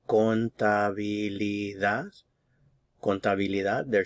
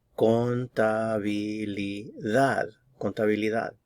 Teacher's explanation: The stress is on the last syllable.